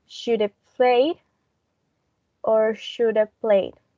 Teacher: We have a reduction of have, and it's going to be either of or just a. So should have played or should have played.